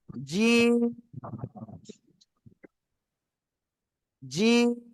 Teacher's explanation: জিহ্বার মধ্যখান বা মাঝখান, এই জায়গা উপরে তালুর সাথে লাগাবো, লাগিয়ে আমরা উচ্চারণ করব জোরে, শক্ত করে। · আর এই অক্ষরটা আমরা শক্ত আওয়াজে উচ্চারণ করব, 3 আলিফ টান দিব। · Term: জিম